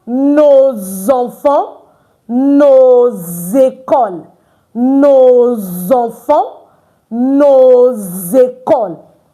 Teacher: N O S is pronounced no. But before a vowel the S is pronounced as Z.